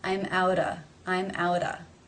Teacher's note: It's at the end of a word, but it does link to the next word, which begins with a vowel sound. Therefore, the sound comes between two vowel sounds. It is then going to be pronounced as the flap, tap, T, or in other words, the D sounds